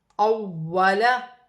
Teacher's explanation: واو مشدد ہے، جماؤ کے ساتھ ادا کیا جائے گا۔ الف مدہ بن رہی ہے، اسے ایک الف کی مقدار کھینچ کر پڑھا جائے گا۔